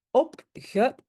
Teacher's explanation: J'ai un D à la fin, même si je le prononce comme T, mais j'ai un D et ça c'est le fameux soft ketchup.